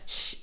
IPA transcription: ɬ